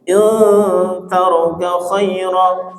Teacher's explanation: Kalau ikhfa ya, nun sukun bertemu tak maka direnggangkan. Kasih kesempatan dengungnya ya. Bukan in taroka, bukan in, bukan, tapi in taroka, renggangkan dikit.